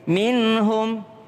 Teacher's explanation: Nun ketemu dengan ha idhar minhum